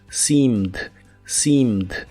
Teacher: Igual se pronuncia con la I larga o doble y la última E no se pronuncia, solo la D.